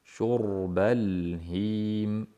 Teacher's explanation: faqat lam sukunli qalqala bo'lib qolmasligi kerak